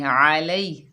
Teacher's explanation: लाम के ऊपर ज़बर है, आगे या साकिन है, लाम को या साकिना से मिलाकर पढ़ेंगे। ये याए लीन है। ठीक है, नरमी और जल्दी से अदा करेंगे।